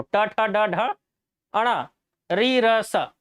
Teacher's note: जीभ ऊपर मुड़ रहा है, मूर्धन्य। जीभ मुड़ रहा है, मूर्धा।